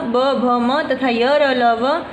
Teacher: जिन वर्णों के उच्चारण में स्वर तंत्रियों में कंपन पैदा होता है, यानी वाइब्रेशन, है ना, वाइब्रेशन पैदा होता है, उन्हें सघोष वर्ण कहते हैं।